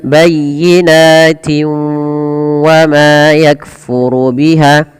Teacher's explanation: Tapi kalau kita lanjutkan bayyinatin wa ma yakfuru biha, masukkan tanwin yang di sini pada lafal tin ketemu waw karena dia ada bacaan idgham bi gunnah. Yaitu cara membacanya memasukkan suara tanwinnya kepada huruf waw